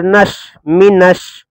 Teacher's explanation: یہ جو شین ہے یہ حروف شمسی میں سے ہے، یعنی حروف شمسی میں مطلب ادغام ہوتا ہے، لام تعریف کا ادغام، یعنی لام نہیں پڑھا جائے گا، ڈائریکٹ یہ نون شین میں مل جائے گا، اسی کو کہتے ہیں لام تعریف کا ادغام۔